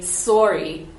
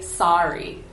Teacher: A lot of times it's more nasal compared to American varieties of English.